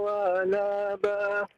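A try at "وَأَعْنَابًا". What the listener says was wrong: Wa a'naba, ainnya Pak, wa a'naba.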